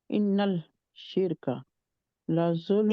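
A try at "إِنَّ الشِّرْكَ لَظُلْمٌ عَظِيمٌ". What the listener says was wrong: नहीं कहेंगे, इन नशिर का, शीन हरूफे शमसी में से है, ठीक है। सीन, हाँ जी, लाम को नहीं पढ़ेंगे।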